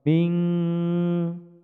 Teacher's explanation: mim sukun bertemu dengan huruf ba, dipanjangkan dua ketukan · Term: ikhfa safawi